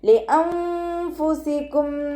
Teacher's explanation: നൂനിൻ്റെ സൗണ്ടിനെ വ്യക്തമായിട്ട് കേൾപ്പിക്കാതെ ഒന്ന് ഹൈഡയും ചെയ്യുക. അതോടൊപ്പം തന്നെ മണിക്കുകയും ചെയ്യുക കേട്ടോ. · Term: ഇഖ്ഫാൻ്റെ